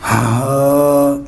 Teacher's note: ہا جو ہے یہ حلق کے سب سے نچلے حصے سے ادا ہوتا ہے